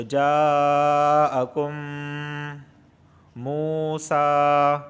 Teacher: میم ساکن کے بعد ایک اور میم آیا ہے تو یہ ادغام شفوی مع الغنہ ہو رہا ہے، لہٰذا یہاں پر ادغام بھی ہوگا غنہ بھی ہوگا۔ · واو ساکن سے پہلے پیش آیا ہے، اس وجہ سے میں منہ کو کھینچ رہا ہوں